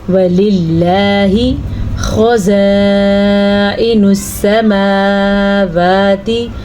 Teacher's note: اس کسرہ کی وجہ سے لفظ اللہ کو باریکی سے ادا کیا جائے گا · خا کو ہم پر پڑھیں گے کیونکہ خا بھی حروف مستعلیہ میں سے ہے